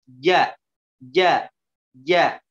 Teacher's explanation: Huruf ja, tengah lidahnya ditempelkan ke langit-langit atas.